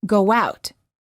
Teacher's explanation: when we say go out, we insert a little w sound and it sounds like go out.